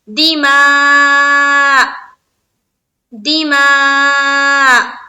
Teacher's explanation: ہم جب یہاں پر ہم اسٹاپ کریں گے تو حمزہ کی حرکت ہٹ جائے گی، لیکن حمزہ کو پڑھیں گے، یعنی کہ لاسٹ میں رکنے کے سمے حمزہ ہے، اینڈ میں یہ سمجھ میں آنا چاہیے، دماء دماء، اس طرح سے رکیں گے، ٹھیک ہے؟